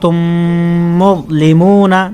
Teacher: میم ساکن کے بعد دوسری میم آ جائے تو اس میں ادغام شفوی ہوگا یعنی غنہ کر کے پڑھیں گے۔ تو یہاں جب پڑھیں گے تو یہاں پر غنہ کر کے پڑھیں گے اس طریقے سے، تم مظلمون، جیسے تم یہ آواز آ رہی ہے تو یہ تھوڑا ٹھہر کر 1 الف راؤ غنہ کریں گے اس طریقے سے۔